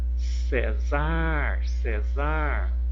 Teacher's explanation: O Cé é a sílaba tônica